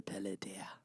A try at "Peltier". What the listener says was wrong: I just know there's no vowel in between the L and the T. it can't be pel anything other than a T sound